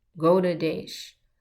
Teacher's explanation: This word Goda, it's not with the R, like in the name of Mahaprabhu, it's this D. We put it with a dot under it, and it has a slight R sound.